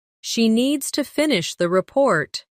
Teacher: Stress needs and report and let the small words fall quietly.